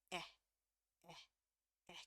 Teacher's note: agak berasa ada tekanannya di pangkal lidah. Ya, yang dekat tenggorokan itu ada berasa tekanannya.